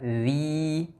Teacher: Huruf dzal, ujung lidah dikeluarkan sedikit dan dipanjangkan 2 harokat.